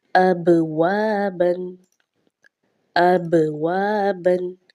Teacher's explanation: با چونکہ ساکن بھی ہے اور حروف قلقلہ میں سے بھی ہے تو آواز جو ہے وہ جنبش سی ہوگی